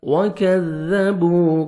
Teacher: کاف کو باریک پڑھیں گے اور زال کو نرمی سے ادا کرنا ہے ، وَكَذَّ زور سے نہیں پڑھیں گے، زال کو نرمی سے